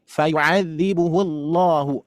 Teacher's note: terus kita memasuki ke lafaz Allah kita tebalkan